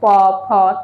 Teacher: ফটাকে আমরা বলবো অষ্ঠ মানে ঠোঁট ঠোঁট টাচ হচ্ছে দেখো প ঠোঁট উচ্চারিত হচ্ছে তো এজন্য আমরা বলবো হচ্ছে ঠোঁট আমাদের টাচ হচ্ছে দুটোর